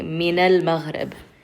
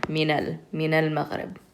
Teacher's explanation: So when there's a word before it, you take that last vowel, which is the fatha, and you connect it to that lam